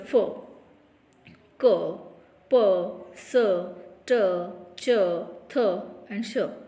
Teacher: here our vocal cord does not vibrate, means these all are voiceless sound.